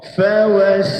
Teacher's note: perhatikan bunyi qalqalah segera pada huruf ta